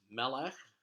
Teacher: Mela is also stressed on the first syllable · Next word is melech, which means king, and Seah, the author, gives you a bunch of other words related to the same root, but all you have to know is melech, king, and like kesef, melech is also stressed on the first syllable because it has two segolets, two of those kind of grape-shaped uh, vowels in a row there.